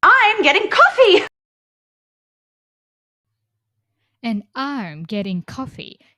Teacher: Do you notice coffee? We use falling intonation. So in falling ination in finishing tone your voice goes up first call and then it goes down fe is falling intonation.